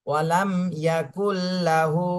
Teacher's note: আলিফ টান দিতে হবে ইয়াকুল্লাহু ওয়ালাম ইয়াকুল্লাহু ওয়ালাম ইয়াকুল্লাহু ওয়ালাম ইয়াকুল্লাহু মিম সাকিনে কিন্তু কোন গুন্না হবে না